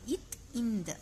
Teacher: அடுத்தது இத் இந்த ஆகிய இரு மெய்களும் மேல்வாய் பல்லின் அடியை நாக்கின் நுனி பொருந்துவதால் பிறக்கின்றன